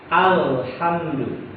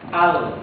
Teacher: Jadi bukan dari ujung lidah, bukan juga dari punggung lidah, tapi dari tepi lidah, ya, dari tepi lidah, ya, tepinya. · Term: huruf lam